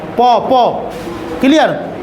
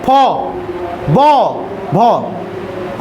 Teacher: ओष्ठ मतलब दोनों ओठ का उच्चारण रहेगा।